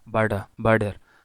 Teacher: usually the speaker pronounce it like an alveolar tap